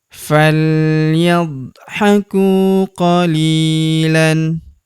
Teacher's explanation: Huruf ku kita panjangkan 2 harokat karena terdapat waw sukun di depannya.